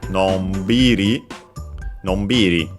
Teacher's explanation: usually accented on the syllable before the ri, so on the b, in this case, nonbiri, nonbiri.